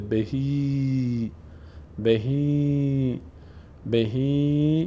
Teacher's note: کسره بعدش یا صدای ای می‌گیره و مد هم سبب میشه تا صدای ای کشیده بشه